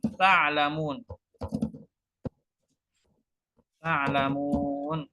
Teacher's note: Ta dan ain. Dinamakan tabaud karena ta dan ain makhrajnya berjauhan. Dinamakan mutlak karena ta yang huruf pertama harokat, hurufnya ain, kedua hurufnya sukun, harokatnya sukun.